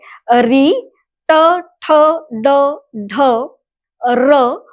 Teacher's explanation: मूर्धन्य अर्थात जिह्वा गोलाकार होकर पीछे की ओर चली जाती है, वो मूर्धन्य की ओर चली जाती है, मुड़ जाती है। ऐसी स्थिति में हम लोग देखेंगे जैसे टमाटर ये शब्द बोलते समय जिह्वा राउंड होकर पीछे की ओर मुड़ जाती है।